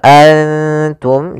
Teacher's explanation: dan nun sukun itu sama bunyinya kedua-duanya adalah bunyi n maka ketika bertemu ta nunnya disamarkan ke huruf ta an langsung kepada makhraj daripada makhraj huruf ta wtum seperti itu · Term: Ikhfa